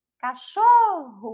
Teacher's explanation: a sílaba tônica é o xô, que não é a última